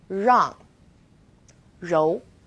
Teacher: it's quite similar to the are sound and run but the R is a little softer so try moving your tongue more to the back of your mouth